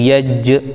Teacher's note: جیم حروف قلقلہ میں سے بھی ہے تو یہ آواز کو لوٹے گی اس میں